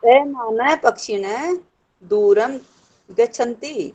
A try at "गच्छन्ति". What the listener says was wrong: हाँ गच्छन्ति, गच्छन्ति नहीं गच्छन्ति, च को भी बोलना है। नहीं गच्छन्ति ही आएगा, च को भी बोलना है। गच्छन्ति खाली नहीं, च को भी बोलो, ये मैं कह रही।